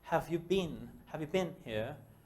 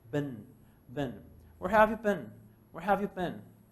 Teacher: Entonces, esta palabra no la pronuncies como been. Es más como un ben. Relajado, un poquito más a una E. No es completamente de ben, no.